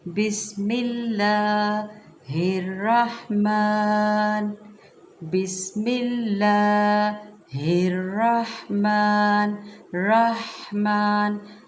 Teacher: میم کے اوپر چونکہ کھڑا زبر ہے، مقدار کم نہیں کرنی، پوری پڑھنی ہے